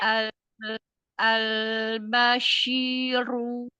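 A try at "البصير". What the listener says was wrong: masih kelamaan. Itu kelamaan. Al-bashiru. Tafashi, makhraj dan sifat. Lanjut ke harokatnya. Shiru. Al-bashiru. Nah, Umi baca gini. Shi. Tafashinya tuh kelamaan Umi. Shiru. Agak dipercepat.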